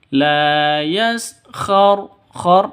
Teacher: khor ra-nya tebal, tafkhim tebal ya